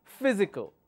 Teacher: the third from the uh from the right anti penultimate will have the stress